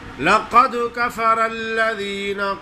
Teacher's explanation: لقد کفر اللہ نہیں پڑھیں گے، لقد دال کو زیر کریں گے، قلقلہ ادا کریں گے